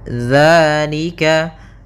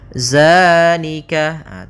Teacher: Di sini tidak dibaca dengan zai, akan tetapi dengan zal, ujung lidahnya menempel dengan gigi seri atas.